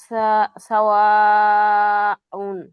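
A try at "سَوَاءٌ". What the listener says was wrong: চার না করলে হচ্ছে আপু, বলেন সাওয়াউন, এটা কি মাদ?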